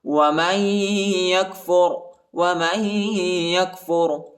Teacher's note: ومن یکفر، ومن یکفر، میم کو یا کے ساتھ ملائیں گے، نون نہیں پڑھا جاتا، نون ساکنہ ہے اور یا پر جو ہے شد آئے اور ادھر غنہ کریں گے